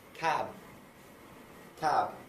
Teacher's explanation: cab should be moving our voice box towards the end of the word. So when I finish this, by physically testing for it, I should be able to hear the b and its vibrations moving.